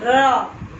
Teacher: जीभ थोड़ा टेढ़ा होता है और बीच से हवा पास होती है। र हल्का घूमता है। र हमारा जीभ हल्का घूमता है और दोनों साइड से हवा आती है। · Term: लुंठित